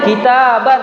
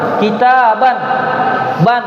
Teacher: kita berucap seakan-akan ada nun yang kita ucapkan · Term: nun sukun